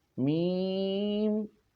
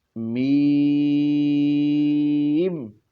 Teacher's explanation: میم پڑھتے وقت جو آواز ہے وہ منہ سے ادا ہونی چاہیے، ناک سے ادا نہ ہو۔ میم، ناک میں آواز نہ جائے، بلکہ میم۔